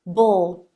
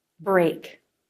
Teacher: Your tongue can be in position for the R, as you start the B. The position for the R is front of tongue pulled back and up. Lips flare. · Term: BR consonant cluster